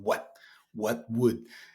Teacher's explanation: they don't pronounce the t in what?